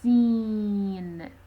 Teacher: when you say seen, it is nasalized. That is to say, when you pronounce the e sound, the air somehow goes out of the nasal cavity.